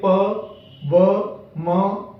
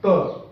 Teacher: इसमें से तीन व्यंजनों को पढ़ते समय हमारे ओठ आपस में मिलते हैं, केवल त को पढ़ते समय ओठ नहीं मिलते